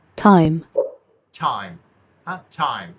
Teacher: ওই যে দাঁতের উপরের জায়গা থেকে, অ্যালভিওলার রিচ, অ্যালভিওলার এই জায়গা থেকে উচ্চারণ হচ্ছে। আবার দেখেন, খেয়াল করেন, হ্যাঁ, এইখান থেকে উচ্চারণ হবে, এটা অ্যালভিওলার রিচের সাউন্ড।